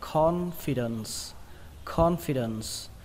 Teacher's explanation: trọng âm của nó rơi vào âm đầu tiên, âm con, con. Các bạn nhớ khờ nó ra nhé, nó không phải là con, nó là con.